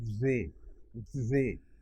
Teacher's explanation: Now we say they, but those people would say they. You can see my tongue coming out and sort of vibrating a bit against my teeth, and these are called interdental fricatives.